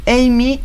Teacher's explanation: siempre con el acento en la primera sílaba